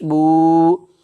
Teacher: उल्टा पेश को एक अलिफ के बराबर खींच करके अदा करेंगे